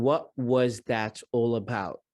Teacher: She's dropping the T at the end of every single word here.